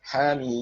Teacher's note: Ha-nya 2, karena ha-nya 2 harokat disebut mad tabi'i harfi, mimnya 6 harokat disebut mad lazim harfi karena merupakan huruf sulasi.